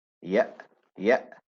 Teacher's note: So not a heavy bounce as in qalqala, but a slight bounce.